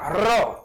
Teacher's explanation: र या वर्णाचा उच्चार करताना हवा कंपन पावते म्हणून र ला कंपित वर्ण म्हणतात